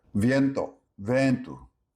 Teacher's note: Portuguese frequently drops the I glide you see in Spanish.